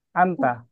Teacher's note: Dia nggak ada ikhfa dalam bahasa Arab, jadi anta, jelas saja.